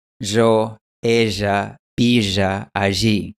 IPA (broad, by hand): ʒo, eʒa, biʒa, aʒi